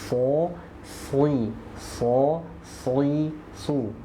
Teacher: huruf Shad itu keluarnya dari ujung lidah sejajar dengan gigi seri bawah so si so su Nah itu makhrajnya ujung lidah sejajar dengan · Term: huruf sod